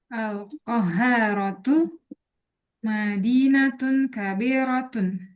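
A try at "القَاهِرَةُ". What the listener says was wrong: Al-Qahirah. Haknya dikasrahin. Qahiratu.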